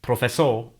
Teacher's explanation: the letter R is silent in the final position in Catalan, so this word, professor, ends in a vowel sound